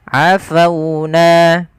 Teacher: Pada lafal fauna, di sini ada huruf waw yang didahului dengan huruf fathah, maka ia kita namakan dengan bacaan lin, yang dimana lembut di dalam melafalkannya